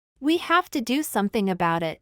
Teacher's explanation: i de la última palabra y como consecuencia de este enlace la t es pronunciada con uno de los sonidos que posee al cual le denominan t vibrante o flap sonido que se asemeja a nuestra r del español